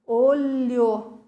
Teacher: É um som só. A língua vai lá em cima no céu da boca e volta, faz aquela curvinha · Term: o som do LH